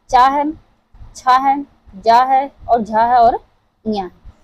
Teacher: च वर्ग जितने हैं वो हमारे तालु से उच्चारित होते हैं